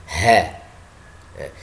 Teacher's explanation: Jadi keluarnya dari tenggorokan bagian bawah, bagian dalam.